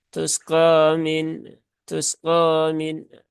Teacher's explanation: Sin sukun seringkiali terbaca ikhtilas ya tusqomin tusqomin biasanya hal itu terjadi karena kalau dia di